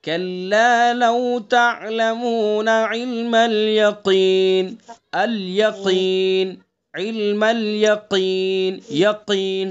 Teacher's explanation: تو اس لیے مخارج کو ہمیں یاد رکھنا ہے کہ اس حرف کا کون سا مخرج ہے. تو قاف کا مخرج ہے زبان کی جڑ اور اس کے مقابل اوپر کا تعلق. تو وہیں سے ادا کریں گے.